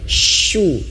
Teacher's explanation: huruf syin itu asal makhrajnya yaitu di tengah lidah